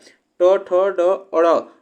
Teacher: यह मूर्धा से उच्चारण होते हैं